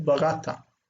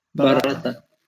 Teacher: accent then is on the second syllable, barata